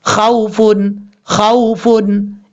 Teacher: اگر خا کے اوپر پیش ہو تو پھر واو مدہ ہوگا، کیونکہ واو مدہ کی تعریف ہے واو ساکن سے پہلے پیش ہو تو واو مدہ ہوگا، اور واو لین کی تعریف واو ساکن سے پہلے زبر ہو تو واو لین ہوگا. تو یہاں اس واو لین کا مطلب اس کو لمبا نہیں کریں گے، شارٹ کٹ پڑھیں گے